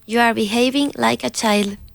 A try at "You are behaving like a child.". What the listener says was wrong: Stronger with the D in child.